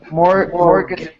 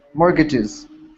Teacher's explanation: the t you don't pronounce the t